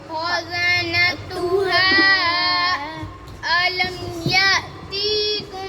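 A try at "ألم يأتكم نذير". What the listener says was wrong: ती लंबा नहीं कहते, अलम यअतिकुम नज़ीर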